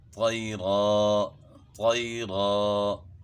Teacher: اور طیرن یہاں جو ہے نا دو زبر ہے، تو دو زبر پہ جب ہم وقف کرتے ہیں تو اس کو الف سے تبدیل کرنا ہوتا ہے. طیرن ہے تو وقف طیرا، طیرا، یعنی ایک الف کی مقدار کے برابر کھینچیں گے.